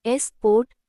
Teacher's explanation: Here, the su part doesn't sound like the u name, ju, or the short u, but like a light sa or sa. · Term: schwa sound